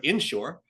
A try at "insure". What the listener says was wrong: insure. The stress is on the shore. that would be inshore.